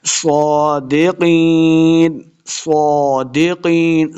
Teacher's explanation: صاد کے اوپر کھڑی زبر ہے اس کو 2 حرکات لمبا کر کے پڑھیں گے